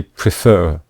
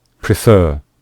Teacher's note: becomes preferred and regret becomes regretted and you can see here we stress the final syllable when we say prefer we say prefer so that is why we double the consonants